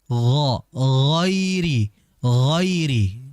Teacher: huruf yang dia itu tebal berharakat fathah vokal akhirnya o. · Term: ghain